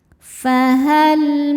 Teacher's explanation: Lam sukun disebut lam mutlak. Ada lam sukun yang tidak menghadapi lam lagi atau tidak menghadapi ro. Maka lam dibaca dengan jelas.